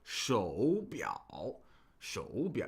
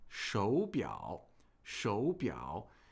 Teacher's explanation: we pronounce the first third tone of the pair as just a rising tone